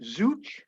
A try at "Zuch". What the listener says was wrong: Yeah, Such. The Z is silent, so Such.